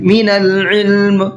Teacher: عین کو بھی حلق سے نکالنا ہے